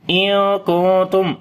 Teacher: after the noon sakin the next letter is ta, we make ikhfa which is the light ikhfa. Same on the light ikhfa here on the next noon.